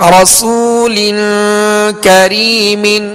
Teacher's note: لام کے نیچے دو زیر کی تنوین ہے، آگے کاف حروف اخفا میں سے ہے لہذا غنہ کر کے پڑھیں گے